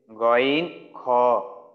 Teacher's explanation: তিন নাম্বার মাখরাজ হলকের শেষ হইতে